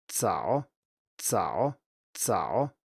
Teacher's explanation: Well, if you say 早, you will have a voicing when you come to the vowel, because these vowels are obviously voiced, but the start here, the Z bit, is not voiced in Chinese. If you pronounce this correctly then, it will be 早, but if you pronounce it with English pronunciation, as it were, it will be 早, or maybe 早 if you have the stop but still add voicing. · So if you listen carefully, you should hear that there's a little stop. I let air pressure build up at the beginning and then release it, and as I release it, I say an S.